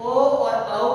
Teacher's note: ओ दौतो कंठोष्टम, अर्थात ओ और औ का उच्चारण स्थान कंठ तथा ओष्ठ होता है। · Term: कंठोष्ठम